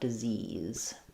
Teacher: So it sounds like disease. I'll think of that first letter I as being the lax I sound, short and reduced vowel. And then second is the stressed tense E sound, disease.